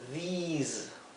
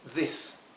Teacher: Aquí lo he transcrito con doble I, a these, porque quiero que se pronuncie como una I larga